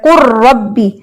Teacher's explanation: لام را کے اندر ایسے مرج ہوا ہے کہ لام کی کوئی صفت باقی نہیں رہی، وہ مکمل طور پہ تمام طریقے سے مدغم فیہ میں داخل ہو چکا ہے. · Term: ادغام حقیقی تام